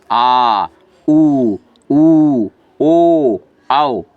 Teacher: पश्च माने पीछे। जिन स्वरों के उच्चारण में जीभ के पीछे का हिस्सा उठता है वह पश्च स्वर कहलाते हैं।